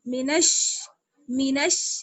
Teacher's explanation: نون کو ہم شین سے ملائیں گے. نون شین زبر نش، شد ہے اس لیے جمع کر پڑھیں گے